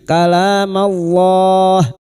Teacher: lam jalalah yang didahului fathah dibaca tafkim